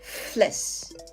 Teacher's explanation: the Dutch F does not have voice we just let air flow between our upper teeth and our lower lip